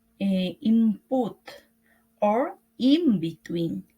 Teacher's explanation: For example, the prefix in, where sometimes it appears in other times as im, before variable words, such as put or between, in is pronounced with an m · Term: assimilation